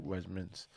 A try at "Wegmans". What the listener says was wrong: Wegmans, not wedge.